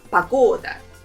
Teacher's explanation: There are 3 syllables in this word, and the second one is stressed. Погода. And the important note here that the first letter O, we will pronounce it as A because it's not stressed.